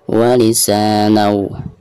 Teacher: Walisa dipanjangkan 2 harokat karena dihukumi mad tabi'i, harkat fathah berhadapan dengan alif. Walisanau. Nun yang ada tanwinnya atau di atas nun ada tanwin fathatain lalu berhadapan dengan salah satu huruf idgham, di sini waw ya, dan termasuk idgham bigunah.